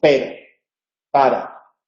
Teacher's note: La R en posición intervocálica y en contacto con otra consonante que no sea L, N o S corresponde al alveolar vibrante simple. Entonces hay un único toque